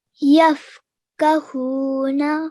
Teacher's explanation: you elongated the who for 2 seconds, which is really good